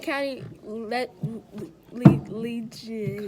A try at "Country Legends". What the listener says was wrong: Country. You said county.